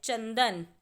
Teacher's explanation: च के बाद न की आवाज़ आ रही है, इसीलिए च पर बिंदु लगाकर हम चंदन लिखेंगे।